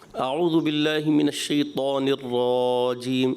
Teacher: را جو ہے نا تھوڑا کھنچتا ہوا محسوس ہوا زبر اس کی لمبی محسوس ہوئی